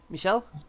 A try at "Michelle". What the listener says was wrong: Michelle. Stress on the first syllable. Michelle.